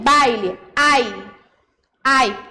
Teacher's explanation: O A, então, é a vogal. O I, semivogal. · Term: ditongo decrescente